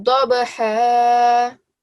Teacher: This is a ba, so whenever we say this, because ba is a kalkala letter, whenever we have a ba come up, we make sure that we give a slight jerking sound. So dabaha, and dod is a thick letter, so whenever we say dod, we give it a sort of a circular mouth, a round mouth.